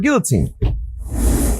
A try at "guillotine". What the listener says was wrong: We pronounce L here in America. Still an L. Just say the L twice. Guillotine.